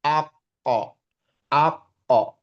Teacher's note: Kof ingat lagi pangkal lidah, makrotnya di pangkal lidah, ya, lidah bagian terdalam.